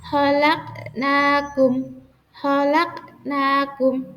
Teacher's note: Qalqalah yang berada di tengah memantul. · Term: Qalqalah sugro